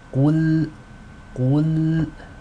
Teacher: Qaf is a heavy letter. It is read with tafkhim, but the lam sakina following it is light. So make sure you have that transition.